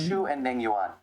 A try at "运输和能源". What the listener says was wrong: This American guy, he's got an American accent, right? And he's deliberately pronouncing Chinese words as if they're English words. That was awful. Nengyuan. 运输。哎呦，太可笑了。All right, don't ever say that. 能源。 运